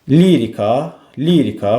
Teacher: Lirika, lirika vurğu əvvələ gəlir